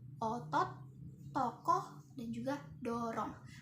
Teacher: ini tuh o tipis. Nah, berada di madya ya, di madya bawah dan juga belakang. Nah, posisi mulutnya itu semi terbuka.